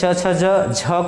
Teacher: स्पर्श संघर्षी च छ ज झ को बोला जाता है